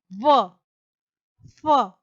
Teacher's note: दंतोष्ठ्य यानी निचले होठ और ऊपरी दांत से, व, फ। आठवां है स्वर यंत्र से यानी कि ह।